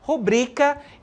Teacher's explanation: Quando a gente fala rúbrica, perceba que a sílaba mais forte é o ru, certo? Quando a gente fala rubrica, a sílaba mais forte está no bri, ok? E de acordo com a norma padrão, com a norma gramatical, rubrica, certo? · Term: sílaba tônica, paroxítona